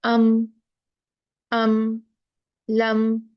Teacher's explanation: मीम को गुन्ना किए बगैर साफ पढ़ दिया जाएगा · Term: इजहार शफवी